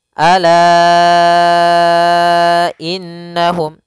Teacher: innahum kembali lagi kita menemuti mendapati mad mad Jais munfasil yaitu adanya Hamzah yang terletak setelah huruf mad di sini la dua harakat datang nya Hamzah maka lanya menjadi empat harakat